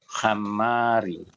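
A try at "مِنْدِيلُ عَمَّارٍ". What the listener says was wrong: Hamma bukan ha, ini ain. Ammari. Ammarin.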